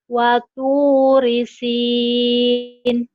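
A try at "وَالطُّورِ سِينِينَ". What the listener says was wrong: jadi panjang kawan watur di sini.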